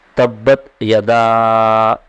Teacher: تبت یدا دونوں کو علیحدہ علیحدہ ادا کرنا ہے۔ یدا میں مد آپ کو دکھائی دے رہا ہے، تو الف پر جو مد ہے اس کو 2.5 سے 3 الف کی مقدار کھینچنا ہے۔ تبت یدا اس طرح سے۔